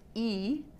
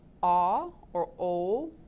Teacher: You can have them think of different vowel sounds. E, the sound E will bring the back of the tongue up, which will make less space. It'll bring the pitch up. The sound ah or o will bring the tongue down, which will make the pitch lower.